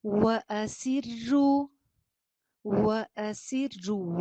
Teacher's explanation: وا پہ ہونٹ گول، سین میں سیٹی اور زیر باریک